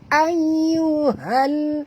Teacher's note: alif lam di sini alif lam qamariyah, bunyikan dengan jelas lam yang mati ni ya